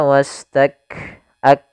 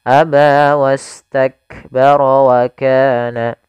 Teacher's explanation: Syiddahnya harus tampakkan dulu baru hamznya, tidak bisa bersamaan. Maka aba wastak ak, mat itu apa namanya, syiddahnya dulu, tertahannya suara baru nafas, ya. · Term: syiddah dan hamznya